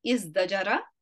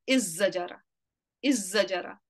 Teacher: sometimes dal changes into the zai and idgham happens